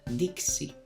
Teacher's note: la equis es la suma de la k y la s